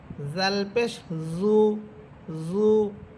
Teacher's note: জিহ্বার আগা সামনের উপরের দুই দাঁতের আগার সাথে লাগবে